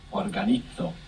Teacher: that Z there is going to be pronounced th